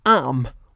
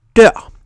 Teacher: Danish shares a peculiarity with British English in that the R isn't always pronounced. Consider, for example, arm, which means arm, and dør, which means door.